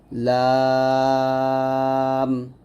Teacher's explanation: জিহ্বার আগার কিনারা উপরের দাঁতের সেটা লাগবে